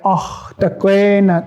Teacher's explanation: That kikini, that is actually a voiceless vowel, a voiceless eh sound. And then the guttural tone is a voiceless back vowel.